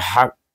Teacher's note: kalau kita berhenti kita baca dengan qalqalah akbar. Kerana ini huruf qalqalah kita sukunkan kalau kita berhenti.